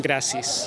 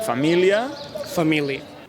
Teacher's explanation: això passa a les paraules esdrúixoles que acaben amb ia, no pronunciem la darrera A